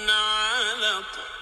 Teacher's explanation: جاء حرف القاف في آخر الكلمة ساكنا عند الوقف عليه وغير مشدد، فيكون حكم التجويد فيه قلقلة وسطى